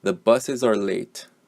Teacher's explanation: The IZ sound at the end of buses and the vowel sound at the beginning of the word are. Okay, these are the sounds that get linked together, and buses are becomes sounds like one word. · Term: linked sound